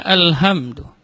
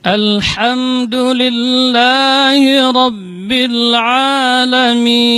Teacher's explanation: Maka harus dibaca dengan ha yang keluar dari tengah-tengah tenggorokan.